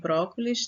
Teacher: Brócolis, 3 sílabas, a sílaba tônica no bró, né, na antepenúltima sílaba, e é uma palavra proparoxítona.